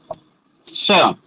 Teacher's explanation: जब तालव्य सकार बोलेंगे तो जिह्वा के अग्रभाग से थोड़े से पीछे वाला भाग तालु के पास जाएगा